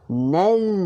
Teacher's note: Masa sebut huruf zal ni, hujung lidah kita keluar sikit.